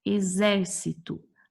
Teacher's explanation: A sílaba mais tônica é o zer. Não é a última, não é a penúltima, é a antepenúltima.